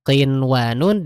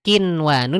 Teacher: Kalau kaf dia di bagian yang keras penyentuhannya. Jadi kalau misalnya tadi nyebutin qinwanun dengan kinwanun itu beda.